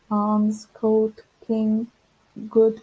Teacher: All the initial sounds are produced with the back of the tongue.